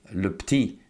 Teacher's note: so the 'eu' sometimes disappears